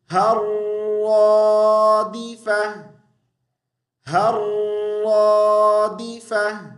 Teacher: ہا کو را کے ساتھ ملائیں گے